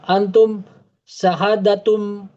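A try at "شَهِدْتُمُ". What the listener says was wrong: Syahad. Mata dalnya mati.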